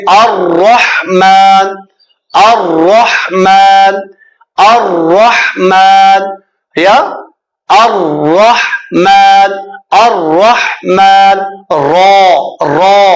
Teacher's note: र का मखरज जबान की नोक और मुकाबिल के तालु से अदा होता है। बहुत से र पढ़ इस तरह ये दुरुस्त मखरज नहीं र जबान की नोक है और ऊपर के दांतों की जड़ से अदा ऊपर के दांत ऊपर के मुकाबिल के तालों से अदा होते हैं।